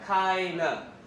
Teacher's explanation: in fast speech, we're gonna get rid of D, okay? Link this together and get rid of the too.